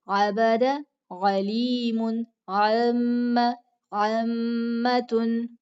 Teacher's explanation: یعنی یہ جو عین جو حرف ہے نا، اس پہ بہت زیادہ پریکٹس کرنی پڑتی ہے اسٹوڈنٹس کو، یہ نہیں جلدی ادا ہوتا. تو عین کو وسط حلق یعنی حلق کے درمیان سے نکالنا ہے، اور ہلکا سا یعنی تھوڑا دباؤ بھی اس پہ ہوگا.